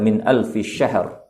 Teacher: syahrin juga adalah ra mufakhamah karena dia sebelumnya adalah dalam keadaan sukun